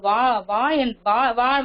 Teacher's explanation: மேல் பல்ல வந்து கீழோட பொருந்திதான் வ என்ற எழுத்துக்களை அப்ப நீங்க உச்சரிச்சு சரியா பாருங்க